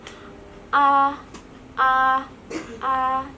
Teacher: A jadi mulutnya dibuka dan A lidahnya pasti ke depan ya, Teman-teman. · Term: vokal depan